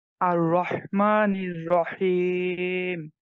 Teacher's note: আর রহমানির রাহিম হার উচ্চারণটা আরেকটু সুন্দর করতে হবে ভাই হ্যাঁ হার যে মাখরাজ কন্ঠের মাঝখান থেকে এটা ঠিকঠাক টানতে হবে